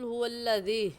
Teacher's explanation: हा हलक का आखिर जो सीने की तरफ है वहाँ से निकलता है